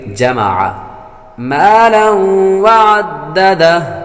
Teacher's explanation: تنوین کے بعد واو حروف یرملون میں سے آ رہی ہے تو غنہ کریں گے